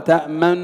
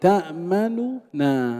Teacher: يلزم من هذا الوجه أن نفك الإدغام فننطق بنونين، بخلاف الوجه الأول تأمن، هذا إدغام ليس فيه فك، لكن هنا سننطق بنونين، تأمننا بنونين، فككنا ماذا؟ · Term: الاختلاس